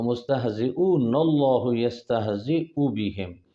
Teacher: تو آپ وصل کریں گے تو ایسے اللہ کا لام کا حمزہ گر جائے گا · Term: حمزہ وصلی